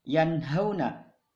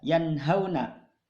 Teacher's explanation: nun mati bertemu dengan ha, maka nunnya dibaca jelas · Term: ijhar